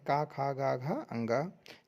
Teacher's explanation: का वर्ग का जो उच्चारण स्थान है वो कंठ है।